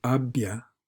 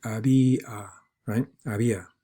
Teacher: these vowel letters, do not form a diphthong. You hear two distinct vowels